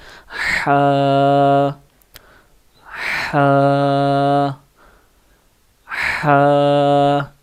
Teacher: یہ حلق کے جو آپ کا حلق ہوتا ہے، گلا ہوتا ہے، گردن، اس کے درمیان میں سے یہ لفظ ادا ہوتا ہے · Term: حروف حلقی